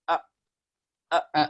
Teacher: Suaranya syiddah, suaranya terputus.